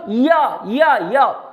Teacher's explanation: य तालव्य है। आप बोलो य, जिह्वा दांत को नहीं छूती।